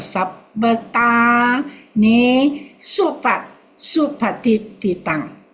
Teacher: Okay, better, but you must practice the mi short, the sabbata, because you want the sabba to be short, so you join to the next syllable